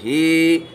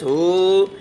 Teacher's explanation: हा ये हलक से निकलता है